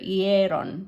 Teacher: The stress should go here, hieron. So the stress is on that E, the A sound.